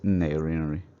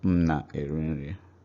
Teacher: when you speak normally, M becomes N. So what you hear is nna erinri instead of mna erinri.